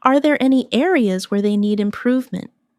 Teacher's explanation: Notice how areas where they flows without breaking.